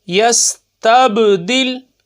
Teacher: با ساکن، تو کیا ہوگا، قلقلہ خوب ظاہر ہوگا